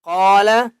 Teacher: قاف کو موٹا کر کے پڑھیں گے اور قاف کو 1 الف کی مقدار کھینچ کر پڑھیں گے